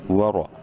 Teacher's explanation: واو زبر وا، رو زبر رو، زبر ہے، رو کو منہ بھر کے پڑھیں گے